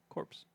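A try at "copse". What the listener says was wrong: Nope, there's no R. Cops.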